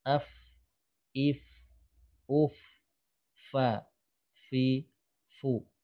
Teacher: Nah, jadi saat masing-masing diucapkan huruf ini, baik ketika sukun atau ketika fathah kasroh dhammah, itu udaranya usahakan tetap mengalir. Fa, fi, fu, udaranya mengalir ya, karena ujung gigi seri itu hanya menyentuh, bukan menekan.